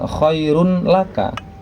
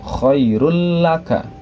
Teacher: bacaan idgam bilagunah maka dibacanya bukan Khairun laka tetapi domatainya hilang nun mati atau Dom matainya hilang berubah menjadi tasdid lam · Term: idgham bila gunnah